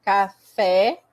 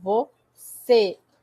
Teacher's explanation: O agudo é, né? Café, e o circunflexo ele é mais fechado.